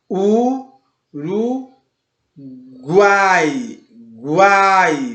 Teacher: Você percebe que começa com um mais discreto, passa para um A mais aberto, mais forte, mais presente e volta para um I mais discreto. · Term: tritongo